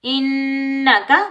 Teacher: نون مشدد پر غنہ ہوگا